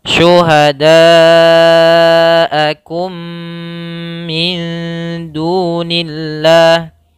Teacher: mad wajib muttasil, yaitu mad yang panjangnya 4 harokat karena ketemu dengan huruf hamzah